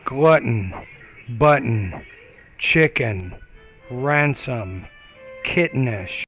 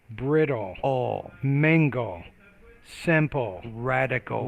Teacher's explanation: So syllabic consonants, when we say syllabic consonant, it simply means there's a vowel and a consonant kind of attached, embedded together that you can't separate them